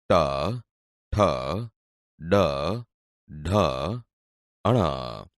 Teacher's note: બોલતી વખતે જીભ ઉપર દાંતના મૂળ ભાગને અડે છે, એટલે તે મૂર્ધન્ય વ્યંજન છે.